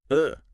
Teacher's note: It is the sound of total relaxation. Your tongue does nothing. Your lips do nothing. You just make a noise. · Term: schwa